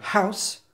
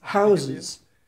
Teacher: An example of an English allophone is the difference of the ow sound in house and houses, the latter having a slightly longer vowel sound